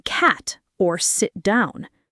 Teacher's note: the held T, where T at the end of a word, especially before a pause or another consonant, is unreleased, like in cat or sit down.